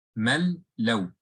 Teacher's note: So the Mim went directly to the makhraj of the Lam, which is the side of the tongue, premolar to premolar.